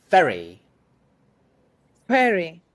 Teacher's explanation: Make sure the vowel is short in the first syllable, which means that you need to get to the second syllable quickly.